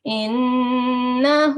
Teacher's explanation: the noon which carries a shadda is called a noon mushaddad, and we do make a strong nasal sound on it. Okay, we sustain our sound on it, like innahu.